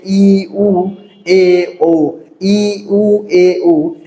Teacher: এগুলো উচ্চারণের সময় ঠোট কম খোলা থাকে। তাই এগুলোকে বলা হচ্ছে কি? সংবৃত স্বরধ্বনি।